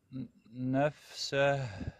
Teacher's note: وانطيني شويه هزه بالهاء وضيق الحبال الصوتيه حتى تجي معك مضبوطه